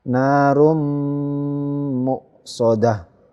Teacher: dhammahnya ini tidak dibaca narun tapi narum, langsung masuk ke huruf berikutnya mim ini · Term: idgham bi gunah